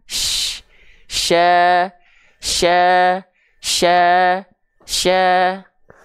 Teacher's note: dari tengah lidah dia naik ke langit-langit enggak nempel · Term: huruf syin